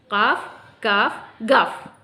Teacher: जड़ ज़बान को ऊपर के नर्म तालु से मिलाएंगे तो अदा होगा काफ।